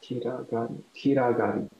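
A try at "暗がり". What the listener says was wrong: Close. It's ku. Kuragari.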